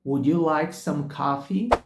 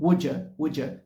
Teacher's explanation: Só que ali na rotina, no dia a dia, os nativos tendem a dizer algo como Would you like some coffee? Would you like some coffee? Em que eles unem o som de would com you. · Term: contração informal